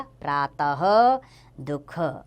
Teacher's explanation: विसर्ग, जिसका स्वर आता है ह के रूप में